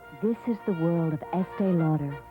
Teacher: What I call my perfumey voice, and it's much more breathy, kind of.